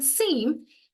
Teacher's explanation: In seem, e is a nasalized vowel because of the adjacent nasal consonant.